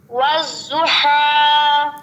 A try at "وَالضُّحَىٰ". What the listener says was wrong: سیٹی کے بغیر، سیٹی کے بغیر۔ والضحى والضحى آخری حرف کو زیادہ لمبا نہیں کرنا، آخری حرف کو زیادہ لمبا نہیں کرنا۔